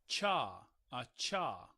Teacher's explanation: And this is the voiceless palatal alveolar affricate